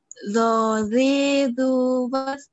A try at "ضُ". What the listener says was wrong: Belum, ya, belum naikin lidah itu. Naikin lidahnya, naikin.